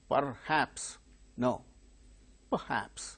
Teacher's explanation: R sound when it is followed by a consonant sound it is not pronounced here R is followed by her so it's a consonant sound